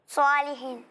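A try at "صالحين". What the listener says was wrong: ٹھیک ادائیگی کی، لیکن آپ نے ایک غلطی کیا کی، آپ نے اسے کچھ زیادہ ہی کھینچا اور اسے ایک الف کے برابر کھینچا۔ ٹھیک ہے، دونوں کو برابر برابر کھینچنا ہے، دونوں کم زیادہ نہیں ہو۔ ایک الف کے برابر دونوں کو کھینچنا ہے تو دونوں برابر ہوں، ایک کو زیادہ ایک کو کم نہیں کھینچنا۔ ٹھیک ہے، اچھی کوشش ہے، مزید بہتری کی کوشش جاری رکھیں۔ آخری کسی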